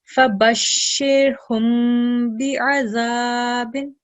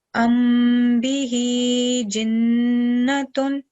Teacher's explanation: we have Mim Sakin, and the next letter is letter Ba. So we're going to produce slight nasal sound for 2 seconds